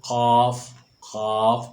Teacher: زبان کی جڑ کا آخر جو کوے کے پاس ہے، جب اوپر کے تالو سے لگے تو قاف ادا ہوتا ہے۔ اس کو پڑھیں گے قاف، قاف موٹا کر کے پڑھیں گے۔ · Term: قاف کا مخرج